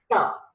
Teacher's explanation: When for the ta sound also, the tip of the tongue is touching the teeth ridge, so its release is sudden